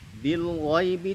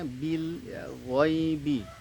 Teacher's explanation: Bil ghaib, bil ghaibi, ada lam sukun. Bil ghaibi tidak boleh dipantulkan, senyumkan lamnya bil, ya, ghaibi.